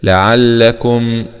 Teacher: كيف ضمكو لعلكو، ميم سكون مع الإظهار الشفوي لعلكم، وبرضو بنقول ما تغنش في اللام